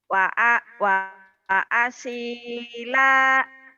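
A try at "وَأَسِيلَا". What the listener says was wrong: Wa asila. Lanya kan panjang, Bu. Wa asila. Wa asila.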